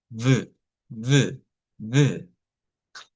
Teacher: esta otra sería un sonido labio dental fricativo sonoro